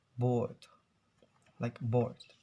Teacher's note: So we can actually hear the R sounds, but in British accents, they will usually avoid to pronounce the R